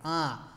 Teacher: শানু নাসিক স্বর মানে যে স্বরটা আমাদের নাকে লাগে আ যেই স্বরের উপর চন্দ্রবিন্দু থাকবো সেটি কিন্তু আমাদের নাকে লাগবে